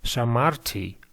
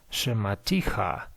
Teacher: We can see that the first vowel is reduced to schwa